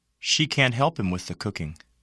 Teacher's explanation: the negative modal can't is usually stressed